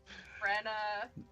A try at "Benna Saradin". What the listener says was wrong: No R.